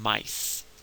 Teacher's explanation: if you say ah and ya together, I, and you run them together, it produces what we call the long I sound